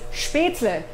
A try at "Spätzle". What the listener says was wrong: Spätzle. Spätzle. It's L-E, not E-L. Spätzle.